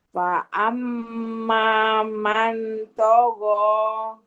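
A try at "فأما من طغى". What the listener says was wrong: Jangan man. Mau dengung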